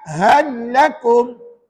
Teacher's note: masukkan lam mati ke dalam lam bersabdu dan dibaca tanpa dengung. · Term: idgham mutamatsilain